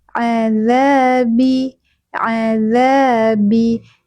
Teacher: A tadi tenggorokan bagian tengah bukan dari hidung.